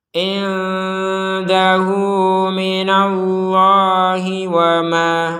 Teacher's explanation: Wama di sini akan panjang ma-nya 2 harokat ketika kita berhenti di ma.